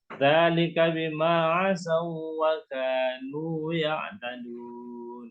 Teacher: waw sukun bertemu dengan wa itu namanya idgham mutamatsilain. Jadi tidak gunnah ya.